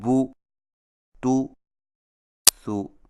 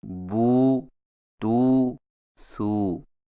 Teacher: سیدھی پیش کو ہونٹوں کو گول کر کے بغیر کھینچے اور جھٹکا دیے پڑھا جاتا ہے، جیسے بو، تو، سو، اور الٹی پیش کو ہونٹوں کو گول کر کے تھوڑا سا کھینچ کر پڑھا جاتا ہے